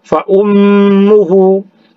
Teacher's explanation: Kemudian fa ummuhu, mim bertasydid itu gunnah musyaddah dengung. Fa ummuhu, hu-nya itu berbaris dhammah terbalik sama dengan yang tadi mad silah qasirah, panjangnya dua harakat.